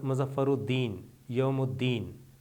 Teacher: لام تلفظ میں ظاہر نہیں کیا جاتا اور الفاظ کا اول صرف مشدد پڑھا جاتا ہے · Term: حروف شمسی